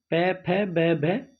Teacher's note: ओट से प फ ब भ प वर्ग पूरा निकलेगा